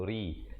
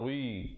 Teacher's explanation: Yang betulnya au sarrihu, ri nya menjadi nipis. Ri macam kita sebut dalam keadaan tersenyum gitu, ri, bukan ri.